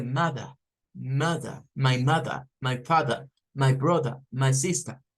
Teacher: Solo suena el schwa al final. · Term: inglés no rótico